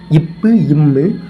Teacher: மேல் உதடும் கீழ் உதடும் பொருந்துவதால் தோன்றும்